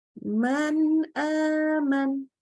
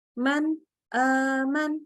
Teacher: kita tidak boleh menambahkan gunnah, juga tidak boleh huruf nunnya jadi syiddah atau terputus suaranya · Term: idhar